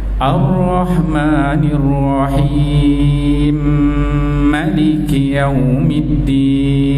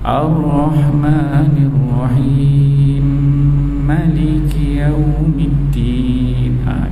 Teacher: dia boleh 2, 4, 6 harkat, kemudian dia masuk dengung pada mim 2 harkat, kemudian dia disambung. Dia kalau macam kita ambil yang wajah 2 harkat tu, Ar-Rahmanir-Rahim Malik Yawmiddin. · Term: idgham kabir